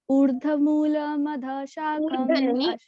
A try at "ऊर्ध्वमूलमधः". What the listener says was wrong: ऊर्ध नहीं ऊर्ध्व